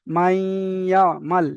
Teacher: নুন সাকিনকে ইয়ার সঙ্গে মিলিয়ে একালি পরিমাণ গুণনা করে পড়তে হবে। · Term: ঈদগামে নাকিস